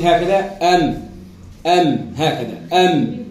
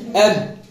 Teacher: الميم الشفتين فوق بعضهم قد تلقاهم مسوين، في الباء تلقى الشفة السفلى مجوزة لقدام شوية